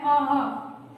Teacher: पहले अ एक स्वर है और उसके बाद ह की आवृत्ति होती है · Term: विसर्ग